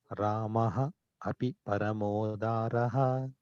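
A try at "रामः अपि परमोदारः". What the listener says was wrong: It's actually two words. Parama udaraha. Udaraha. Ramaha api parama udaraha.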